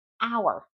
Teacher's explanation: The H is silent. So, it has a vowel sound, even though it starts with a consonant. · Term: silent H